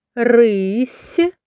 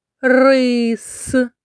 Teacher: в слові рись в кінці є м'який приголосний с а в слові рис твердий приголосний с